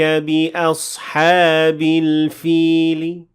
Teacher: I said al-fili with a very slight kasra, and I did the same thing with tanween kasra at the end of the second ayah, because then I dealt with the tanween kasra as if it were kasra, and I applied the same rule, which is 1/3 of the kasra, tadlili. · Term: raom